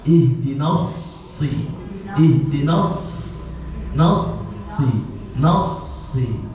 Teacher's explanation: Jadi harus betul-betul dikeluarkan nafasnya, karena nafasnya mengalir, sifat al-hamzah.